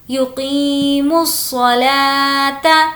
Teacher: حنفاء ویقیموا یہاں پر بھی ہم اس واو کو کنسیڈر نہیں کریں گے ڈائریکٹ میم کو صاد سے ملا دیں گے کیونکہ واو پر کوئی بھی حرکت نہیں ہے